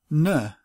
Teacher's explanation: the '-ung' becomes the dental nasal sound '-n'